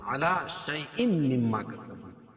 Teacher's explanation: تنوین کے بعد ادغام مع الغنہ کے 4 حرفوں میں سے میم ہے تو یہاں غنہ کر کے پڑھیں گے اور دوسری والی میم پر مشدد ہے تو یہاں بھی غنہ ہوگا.